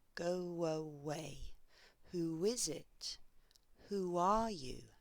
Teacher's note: we insert a w sound when the vowel at the end of the first word puts the highest part of the tongue close to the back of the mouth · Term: intruding w